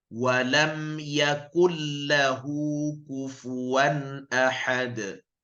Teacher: Idgham bila ghunnah, idgham masuk tanpa dengung.